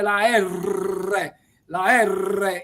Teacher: minale Add drizzar con una r la R è una vibrante se ci fate caso quando pronunziate la R la R Io sto esagerando vi vibra la lingua